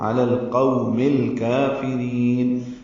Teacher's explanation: قو وولین ہے، ہونٹوں کی نا تمام گلائی سے ادا کریں گے واو کو. علی القوم الکافرین، لام ساکن پہ اظہار، کاف باریک، را باریک اور خا کو لمبا کریں گے.